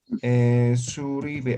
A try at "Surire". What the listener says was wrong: Surire, es con R. Surire, R R, así.